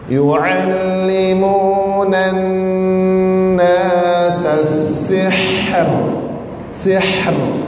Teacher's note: disebabkan sin ini berbaris kasrah, maka roh ini dinamakan roh yang nipih.